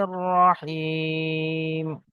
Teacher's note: হা ইয়া জের হি, ইয়া সাকিনের পূর্বে হায়ের নিচে জের এসছে, ইয়া মাদ্দা একালি পরিমাণ টান দিতে হবে।